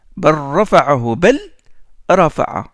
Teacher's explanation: On rentre le lam qui porte le soukoun à l'intérieur du ra. Et on oublie le lam.